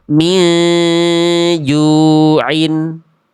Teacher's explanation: Jangan dibaca jelas min ju'in, tapi nunnya annya udah samar. Samarnya menuju huruf jim, tahan 2 harokat. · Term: ikhfa hakiki